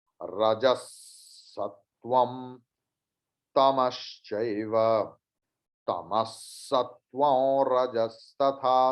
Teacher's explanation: तम के बाद विसर्ग, उसके बाद सकार है इसलिए विसर्ग का उच्चारण भी सकार जैसे होगा